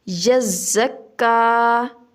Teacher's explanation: پہلا لفظ ہے ہمارے پاس یزکا، یعنی کہ اب تشدید بھی ہے، ہمارے پاس شد بھی ہے اور اس کے اوپر کھڑی زبر بھی ہے۔ اس کو سختی سے بھی ادا کرنا ہے اور ایک الف کے برابر لمبا بھی کرنا ہے۔ یزکا، ذال ہمارے پاس نرم ہے، را کو پر کر کے پڑھنا ہے۔